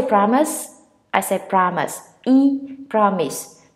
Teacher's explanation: Mostly people say promise or whatever, but no, you stress on the first syllable.